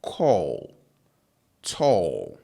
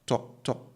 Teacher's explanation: the O is stretched so it's long it's a long O so you hear call tall right but in chi it's a very short O sound so it's like saying tall but cutting it short in the middle so you see to to so that O that you find there that is it if you want to get the long version of this they need to double the vowel right.